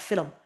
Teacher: Sounds like two syllables. This is called epenthesis, the addition of a vowel sound. We do this in English in Ireland when we say film.